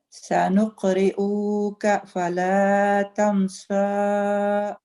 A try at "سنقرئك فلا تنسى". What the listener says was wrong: Okay, you just prolong this dhamma. Do not prolong it. سنقرئك فلا تنسى.